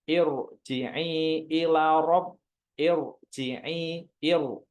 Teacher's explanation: Jadi dibacanya walaupun ir tapi dibacanya tetap tebal.